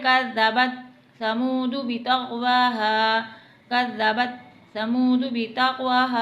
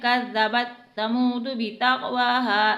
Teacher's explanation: सा में ना तो सीटी की आवाज़ है, ना ही हमने इसे मोटा पढ़ा है, बल्कि इसे नरमी से पढ़ा है। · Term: नरमी वाला हरूफ